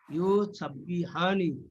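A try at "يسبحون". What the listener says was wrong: ইউসাব্বিহুনা, ইউ করে টান দেওয়া যাবে না। ইউ করে টান দেওয়া যাবে না। ইউসাব, দ্রুত দ্রুত। ইউসাব্বিহুনা, ইউসাব্বিহুনা, ইউসাব, নট ইউসাব, ইউসাব।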